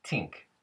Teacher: a unvoiced TH at the beginning of a word, like think, would be tink.